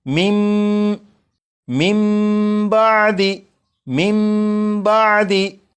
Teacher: नून साकिन को मीम से बदला, मीम से बदल कर गुन्ना करके पढ़ा, और यही इकलाब है।